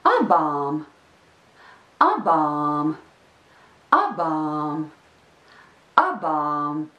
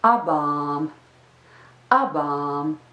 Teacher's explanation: There are two vowels in this word. The first vowel is the short a, and the second vowel is the long a. Yes, those are two separate vowels.